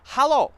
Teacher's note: Okay, so one, the h, I'm putting a little bit more of a h in there. More air is coming out, and then it's more like an a instead of an e.